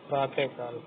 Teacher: विसर्ग का भेद यदि जिह्वा मूल है तब विसर्ग के बाद क, ख वर्ण रहते हैं तब अर्ध विसर्ग उच्चारण होता है